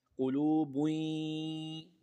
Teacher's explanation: پیش کی آواز کو یا کے ساتھ ملائیں، غنہ کر لیں